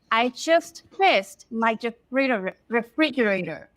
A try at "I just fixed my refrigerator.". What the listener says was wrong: Good. Notice the fixed. We have fixed fixed.